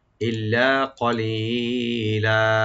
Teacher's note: double করে একালে টানবেন, ইল্লা কলিলা, কটা কফের উপরে রাইট দিবেন, ক মানে জিব্বার গোড়া থেকে আসবে , ক লি একালে টানবেন আর লাস্টে লামে যেটা একালে পরিমাণ